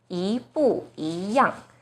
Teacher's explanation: So bu here should be the fourth tone, 不 一 样. Now the first E is followed by a fourth tone, bu. So the first E itself should be the second tone, 一 不 一 样. So problem solved.